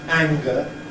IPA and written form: ˈæŋgə (anger)